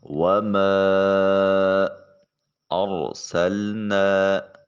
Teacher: وَمَا أَرْسَلْنَا، را ساکن ہے اور اس سے پہلے والے حرف کے اوپر زبر ہے۔ را کو موٹا پر کر کے اور مفخم انداز میں پڑھا جائے گا۔